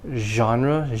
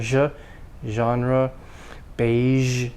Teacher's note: your tongue is bent up you're just creating friction your tongue is not touching up there